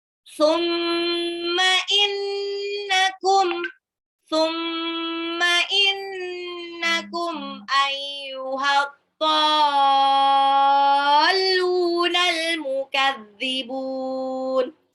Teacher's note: mimnya tasdid gunnah, nunnya juga tasdid gunnah. Alif lam samsiah di ad-dhalun, alif lamnya tidak dibaca karena langsung lebur ke dot.